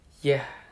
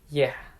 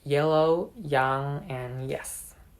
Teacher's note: It is produced by raising the middle of the tongue toward the hard palate. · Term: voiced palatal approximant